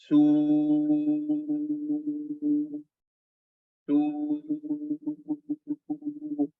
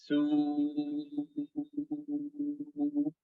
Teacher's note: vibrating your vocal cords plus circling your lips plus raising the furthermost part of your tongue